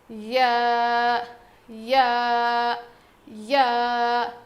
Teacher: یا، زبان کے بیچ کے حصے سے ادا ہوتا ہے. یا یا یا، زبان کے بیچ کے حصے سے یا ادا ہوتا ہے